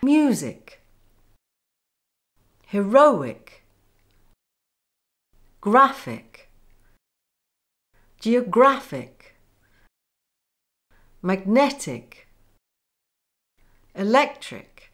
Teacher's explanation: Rule four, words ending in ick or ic. These words have the main stress on the syllable before the ic ending, or in other words, the penultimate syllable.